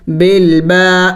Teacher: الف مدہ ہے، اس کو ایک الف کا مقدار لمبا کرنا ہے